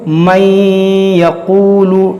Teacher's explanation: नून को या में दाखिल करके गुन्ना करेंगे, इसी को कहते हैं इदगाम।